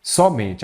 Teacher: a sílaba forte é a penúltima, eu tenho uma paroxítona terminada em E.